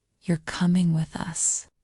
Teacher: when you ask a question try saying you're coming with us this is a statement your voice goes down at the end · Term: intonation